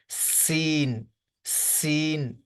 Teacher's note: سین کی آواز باریک اور سٹی والی ہوتی ہے